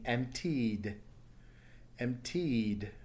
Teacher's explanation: next word is empty with the past tense being emptied emptied notice it's a vowel sound at the end emptied with a vibration so then it takes a D sound